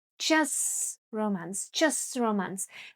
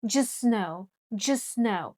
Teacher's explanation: As you can see, in just t disappears. When we say this word separately, we do say t, just.